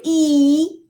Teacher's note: it is a closed vowel because my mouth is not very open